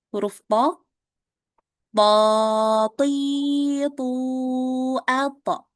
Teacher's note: jangan lupa pangkal lidahnya dinaikkan ya biar huruf th itu dibacanya tebal